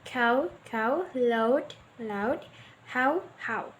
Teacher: The A is longer in duration and forms the nucleus of the diphthong, while the U is shortened and unstressed.